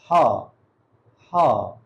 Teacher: جب ہا کو پڑھنا ہے تو تھوڑا سا ہلکی خا نکلے گی یہاں حلق سے